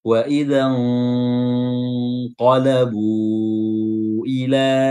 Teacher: huruf qaf ini huruf isti'la, huruf tebal, makanya ikhfa-nya juga harus tebal